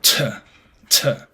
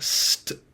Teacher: the beginning of a uh word in the stress position, it is aspirated. So T t uh whereas if it follows an S, it becomes unaspirated. Um, so more of a st sound.